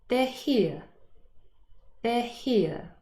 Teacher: Here, although spelled with an R, is really just pronounced h, ear for non-rhotic speakers. So the last sound is the diphthong ear.